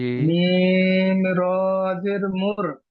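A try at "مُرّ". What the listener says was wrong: জি, কেন এখানে যে আপনি মুর পড়ছেন কেন? রর উপরে তাসদিদ আছে, সাকিন আছে। কার উপরে সাকিন আছে, তাসদিদ আছে?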